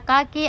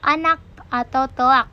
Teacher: Fonem K yang pada posisi awal onset K seperti pada kaki akan direalisasikan secara berbeda dengan simbol tanda tanya pada kata anak atau telak. Dengan demikian dapat dikatakan bahwa realisasi fonem K dalam contoh tersebut adalah bunyi K dan bunyi simbol tanda tanya atau tertutup, dan kedua-duanya dapat dikatakan sebagai alofon dari fonem K.